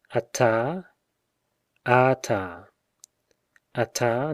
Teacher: regression of the tone with lengthening of the vowel